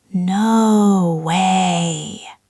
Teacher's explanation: It goes up, then down, then up again. It does. It is like a valley.